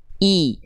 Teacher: Namanya harokat kasroh. Ya, jadi vokalnya i, betul-betul clear vokal i-nya dengan cara mengangkat tengah lidah dan rendahkan rahang bawah. I, jangan condong bunyinya ke vokal e, tapi i, ya.